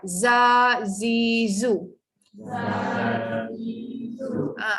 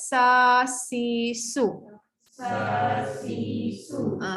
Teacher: Anda tak rasa pun lidah tu dia pergi atas, dekat bawah je. Huruf sin pun sa, si, su. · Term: hujung lidah gusi bawah